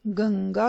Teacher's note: पंचम वर्णों के स्थान पर अनुस्वार का प्रयोग पंचम वर्ण यानी ङ, ञ, ण, न और म, ये पंचमाक्षर कहलाते हैं, इसके स्थान पर किया जाता है। जैसे गंगा, यहाँ पे अनुस्वर के बाद व्यंजन ग है, तो उस ग वर्ग में जो पंचम वर्ण है वो है ङ, तो वहाँ पे हम उसका उच्चारण गंगा कहते हैं।